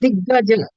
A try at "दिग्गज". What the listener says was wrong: हाँ, so ideally it should be दिग्गज. this is a very important thing because when we speak in Hindi or Marathi, the last consonant we leave it half only. Mandir. So Mandir, Ram, Krishna.